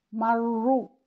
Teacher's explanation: जब रा के ऊपर ज़म्मा हो और तशदीद हो तो भी रा को हम तफ़ख़ीम से पढ़ेंगे यानी मोटा पढ़ेंगे, जैसे कि मर्रू।